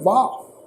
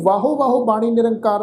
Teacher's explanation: ये शब्द है वाह, इनू वाहो नहीं प्रनाउंस करना